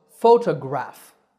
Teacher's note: there are three syllables fo to graph the stress is on the first syllable